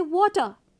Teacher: there are examples in British English where you don't need to even produce r sound. It is generally skipped. So, for example, if you are saying water, W-A-T-E-R, you don't have to pronounce r in that way.